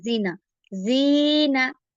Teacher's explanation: زال زیر کو ہم نے لمبا کیا، اس کو جلدی نہیں کرنا